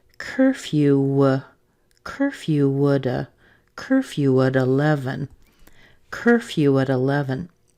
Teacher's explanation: On curfew, we could push the little w sound over too, and we get curfew, curfew at 11.